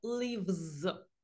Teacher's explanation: Якщо у нас слово закінчується на дзвінкий приголосний, наприклад, слово play – це у нас приголосний, тому ми S вимовляємо як з